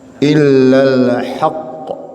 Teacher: Ketika ada berhenti di huruf qaf tasydid, ini harus lebih qalqalahnya lebih kentara.